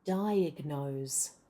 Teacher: And remember your O. Now this O is in an unstressed syllable. It's in the last syllable which is not stressed. · Between the first and the second syllable, we link those two syllables with a very weak y sound.